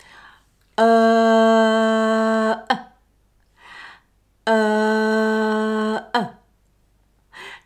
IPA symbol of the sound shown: ɜː